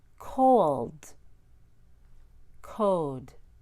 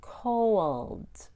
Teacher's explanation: When I say cold, I'm actually saying co plus wold.